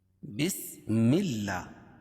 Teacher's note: اللہ کے لام سے پہلے زیر ہو تو اللہ کا لام باریک پڑھا جاتا ہے